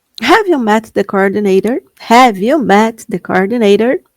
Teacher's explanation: tem vezes que o seu T parece um R. Ele tem esse som mesmo. American English